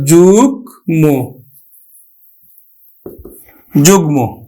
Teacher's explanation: অন্তস্থ জ এর কিন্তু আমরা উচ্চারণ করি না আমরা উচ্চারণ করি কিন্তু বর্গীয় জ এর